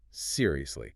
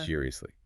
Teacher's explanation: Sad, frustrated, low tone.